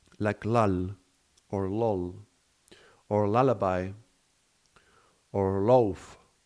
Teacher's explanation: the sound L is very bright. It has a bright resonance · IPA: /l/